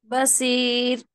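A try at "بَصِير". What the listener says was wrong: आप भी सीन से बोल रहे हैं, स्वाद से बोलो माँ। ऐसा बोलना है, देखिए स्वाद का मखरज अदा होना। स्वाद मोटा पढ़ा जाता, सीन बारीक पढ़ा जाता। बसीर, ऐसा।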